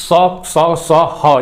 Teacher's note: उष्म स स स ह ये पूरा जो होता है इसमें बहुत ज्यादा गर्म वायु बाहर निकलती है अन्य वर्णों की अपेक्षा